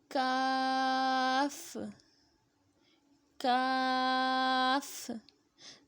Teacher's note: زبان کی جڑ جو حلق کے پاس ہے، جب اوپر کے تالوں سے لگے تو کاف ادا ہوتا ہے۔